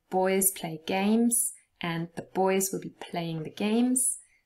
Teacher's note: boys play games will take approximately the same amount of time as saying the boys will be playing the games